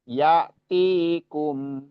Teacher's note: hamzah ini sifatnya siddah. Ya terhenti ketika sukun.